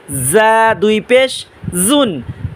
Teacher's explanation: যা উচ্চারণ হবে জিহ্বার আগা সামনে দাঁতের আগা মৌমাছির আওয়াজের আওয়াজ